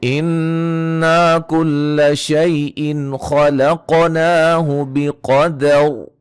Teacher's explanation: نون مشدد پہ غنہ، الف مدہ، یا لین، نون تنوین کا اظہار، خا کو موٹا، قاف کو موٹا، قلقلہ